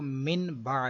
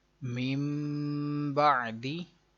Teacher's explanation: اس کی تعریف تھی کہ نون ساکن یا تنوین کے بعد حرف با آ جائے تو اقلاب ہوگا، یعنی نون ساکن اور تنوین کو میم سے بدل کر اخفا کریں گے، غنہ کر کے پڑھیں گے